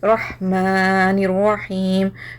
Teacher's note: ये हा आपकी हलक से आ रही। ये जो गोल हा थी ये सीने से आ रही थी, और ये हलक से आ रही। · नून को रॉ से मिलाना means you are bridging नून with रॉ। अलिफ लाम पे हरकत नहीं है, नहीं पढ़ रहे।